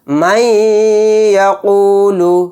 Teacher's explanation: اس میں ادغام یا یعنی ادغام مع غنہ کا قاعدہ ہوگا۔ میم کو یا میں ملا کر تھوڑی دیر آواز کو روک کر غنہ